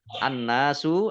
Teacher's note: Nun tasdid dibaca gunnah atau mendengung, ditahan kurang lebih 2 harokat